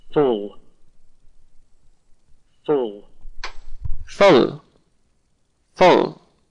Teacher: The L is not very clear. It's not as clear as slip, for instance, or love, for instance. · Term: dark L